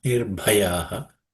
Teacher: This bha is the fourth letter in the per class of consonants, so it should be aspirated.